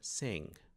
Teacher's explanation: Você prepara o G na garganta, mas normalmente ele não é pronunciado, ele para ali, pelo menos na maior maioria das variantes do inglês.